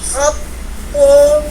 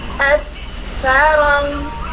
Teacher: Huruf syiddah di huruf tu, khat'u, tidak ada mengalir, sedangkan huruf sa, as-sarang, mengalir napas kita